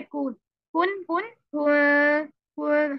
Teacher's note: काफ से डायरेक्टली फौरन एक हरकत का टाइम देके नून पे मूव करना है, हमने इसको पढ़ना है कुन कुन कुन कुन कुन, हम इसको कुन नहीं करना।